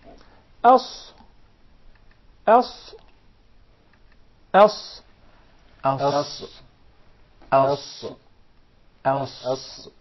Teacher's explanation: the letter Sad comes from the tip of the tongue and the palates of the two top front incisors at a point just above the two front lower incisors